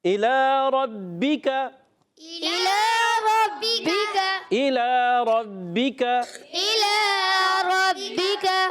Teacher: با مشدد ذرا رک کر ادا کریں گے، با مشددہ، مشدد کوئی بھی حرف ہو یاد رکھیں، مشدد ہمیشہ رک کر ادا ہوتا ہے۔